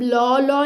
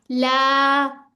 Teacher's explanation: अब लॉ नहीं करना। ला ठीक है। बारीक ही रहेगा।